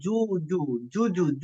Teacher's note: জু জু বললে জিহ্বার মধ্যখানটা উপরের তালুর সঙ্গে লাগবে